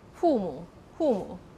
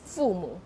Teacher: Labial dental, that means your upper teeth with your lower lips. So they would just replace it with 父母, instead of biting on your lips and say 父母.